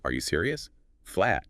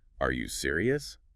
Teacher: It barely sounds like a question. But add that little upward flick at the end